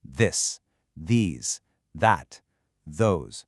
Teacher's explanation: All four of these words start with a voiced th sound. It's not a hard D or a soft T. · It's not a hard D or a soft T. It's a vibrating sound. Put your tongue between your teeth and literally make it buzz.